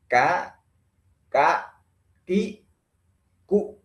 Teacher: kalau dibaca seperti itu tidak ada nafas yang keluar